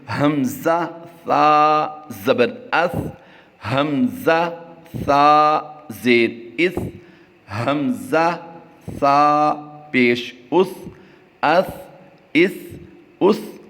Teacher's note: سین کی ادائیگی باریک سیٹی سے ہوتی ہے، صاد کی ادائیگی موٹی سیٹی کے ساتھ ہوتی ہے اور سا جو ہے اس کی ادائیگی بغیر سیٹی سے ہوتی ہے